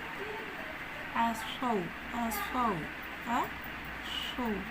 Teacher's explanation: इसमें तेज सिटी की साउंड है